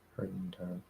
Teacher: Either you do a weak D or you drop the D. It's really hard to stop a D after an N, so we're probably not going to do that at all.